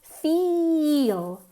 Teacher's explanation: Whereas feel is nasal, it's long, it has 2 syllables almost